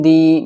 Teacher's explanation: دال کے نیچے زیر ہے تو یہاں پر یا مدہ ہوگا، مدہ بولتے ہیں کھینچنے کو